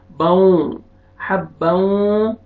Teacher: تنوین کے بعد حروف یرملون میں سے واو آ رہا ہے، ادغام کریں گے غنہ کے ساتھ